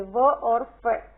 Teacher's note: दंतोष्ठ ऊपरी दांत व निचले होठ से